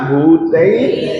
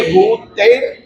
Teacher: र को हलंत बोलिए, आप क्या भूतैर, र पूरा मत बोलिए।